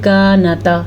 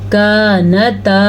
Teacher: یہ الف مدہ ہے، اسے کھینچ کے پڑھیں گے